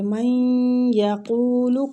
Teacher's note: نون ساکنہ کے بعد یا آیا ہے تو ادھر ہم ادغام مال غنہ کریں گے